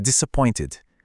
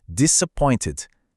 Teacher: Aquele E no final quase some, fica disappointed. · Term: schwa